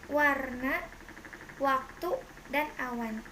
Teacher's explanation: Konsonan W, kriterianya bunyi bilabial, semivokal bersuara